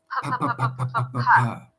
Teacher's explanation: a P sound where you bring the lips together and release air